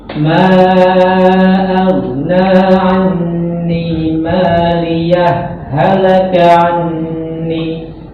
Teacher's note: Ha sukun bertemu ha berharokat. Jadi idgham. Jadi seakan-akan ini bertasydid.